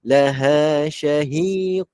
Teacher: Janganlah ho, tak boleh salah. Dia ha ni huruf yang nipis, tak boleh ho, dia nampak tebal. Keluarkan nafas saja.